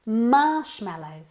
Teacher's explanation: emphasis on the first syllable